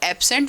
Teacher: may be pronounced with stress on the first syllable, that is first syllable strongly stressed and second syllable weakly stressed, कि हमारा जो first syllable है वो strongly stressed है यहाँ पे, और सेकंड जो है वो weakly stressed है।